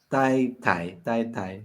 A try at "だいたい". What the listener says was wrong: Daitai, sí. Daitai, sí, va con D primero y después con T. Daitai, sí.